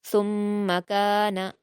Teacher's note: میم مشدد ہے تو اس کو ہم سختی کے ساتھ پڑھیں گے، غنہ کے ساتھ پڑھیں گے ، لیکن حرکت ہونے کی وجہ سے جلد پڑھیں گے، ثم